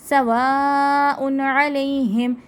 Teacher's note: الف مدہ اور بڑی مد ہے، ٹھیک ہے، 5 سے 6 الف کے برابر ہوتی ہے، بڑی مد کو لمبا کرتے ہیں۔